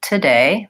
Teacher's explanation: think about lengthening on day and shortening and being light on the syllable for two